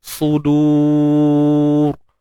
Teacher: Sebelumnya waw mat. Jadi ra mati sebelumnya waw mat, confirm kena baca tebal.